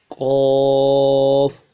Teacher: قاف یہ موٹا حرف ہے، ہر حالت میں اس حرف کو موٹا پڑھا جائے گا۔ قاف کو موٹا کرنے کے لیے زبان کا بیچ اٹھائیں گے۔